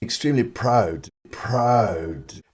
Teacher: his MOUTH vowel is quite different from today's aw, starting a bit further back in the mouth and with no lip rounding at all